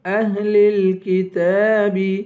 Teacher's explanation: اہل الکتاب، کاف کو باریک پڑھیں گے، تا پہ کھڑا زبر ہے، اسے ایک الف کے برابر کھینچ کر پڑھیں گے.